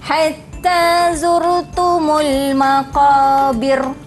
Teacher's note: Jadi kalau sebelum ra yang waqaf ni dia berbaris kasrah, dia memang dibaca secara tarqiq. Ya, nipis sahaja.